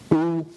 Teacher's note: your lips are rounded and pushing towards the front